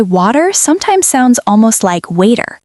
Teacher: American English often changes the T sound into something softer,